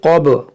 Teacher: क़द मकरल्लज़ीन मिन, यहाँ पर देखें इख़्फ़ा होगा, ये क़ब, क़ाफ मोटा करेंगे, बा में क़लक़ला होगा